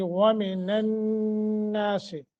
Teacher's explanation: ومن الناس، واو کو موٹا کرنا ہے، آگے نون مشدد ہے، غنہ کر کے پڑھیں گے